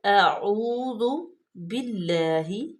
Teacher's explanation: اعوذ باللہ، حمزہ پہ زبر ہے، عین پیش واو، واو مدہ کو لمبا کریں گے اور عین کا مخرج واضح کریں گے، اس کو او نہیں کریں گے، نہیں تو اس پہ حمزہ آ جائے گا۔